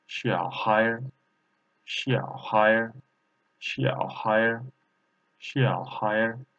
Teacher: third tone and later second tone, so we should read like a half third tone.